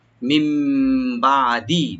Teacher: মিম বাদি, মিম বাদি থেকে পরে, বাদ মানে পরে, মিম এখানে নুন সাইন বলতে বাড়ছে, এখানে আমরা একলাপ করবো গুন্না সহকারে, আনি নুনটা মিমের সাথে চেঞ্জ হয়ে গুন্না সহকারে পড়বো আমরা। মিম বাদি, বাদি আইনটাকে একটু রাইট দিবেন।